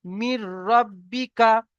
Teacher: তানবিন ও নুন সাকিনকে বিনা গুন্নায় জাহির করে মিলিয়ে পড়তে হবে